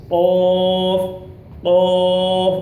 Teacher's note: زبان کی جڑ اور تالو کے نرم حصے سے